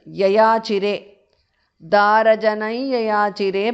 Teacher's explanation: because of sandhi anuswara changes to the nasal of ya